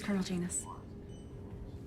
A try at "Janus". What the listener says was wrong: Yeah, you're mispronouncing that. He's Portuguese. The J's silent.